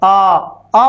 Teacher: जब आ बोलते हैं तो हमारा संपूर्ण मुंह खुल जाता है, आ आ बोलते ही सर्वाधिक मुंह खुलता है